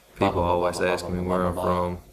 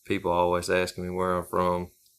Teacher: there's a distinct emphasis on the first syllable of people, always, asking, and on the words where and from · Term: English rhythm